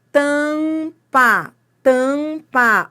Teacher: O A tá sendo nasalizado